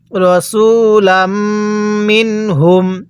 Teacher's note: লাম লাগবে এই মিমের সাথে আর মিম লাগবে নুনের সাথে